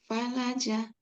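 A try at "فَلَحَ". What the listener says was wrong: Falaha. Nggak ada titiknya. Falaha.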